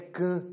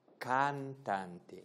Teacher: Nós é can, é um som só. E eles dizem cantante, dizem o A e o N.